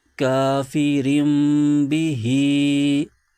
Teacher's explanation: हर्फ बा आ जाए तो इकलाब का कायदा होता है तो तनवीन की जो आवाज है उसको मीम से बदल देते हैं इकलाब का माना होता है बदलना तो यहां पर तनवीन को